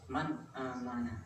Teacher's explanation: Yang pertama adalah contoh bertemu huruf hamzah, ya, hamzah atau dul, seperti lafaz man amanah, man amanah, seperti lafaz man amanah. Jadi ini nun matinya bertemu huruf hamzah, jadi ini harus dibaca jelas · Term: idhar